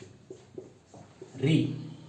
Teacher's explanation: उच्चारण स्थान है मूर्धा यानी मूर्धन्य